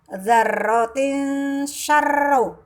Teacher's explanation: ada tanwin bertemu dengan huruf sin maka tanwinnya disamarkan dibaca tipis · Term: ikhfa